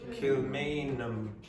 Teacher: you don't pronounce the H